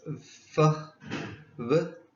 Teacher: produced by touching the bottom lip to the upper teeth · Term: labiodentals